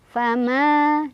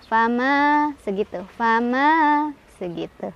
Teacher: Cara bacanya panjang 2 harokat. Fama, 2 ya, jangan banyak-banyak. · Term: mad tabi'i